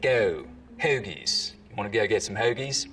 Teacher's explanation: the goat diphthong starts to move forwards in the mouth.